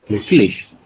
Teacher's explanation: This ch we have to pronounce as sh sound. Sh. So it will become as mir wirklich wirklich leid.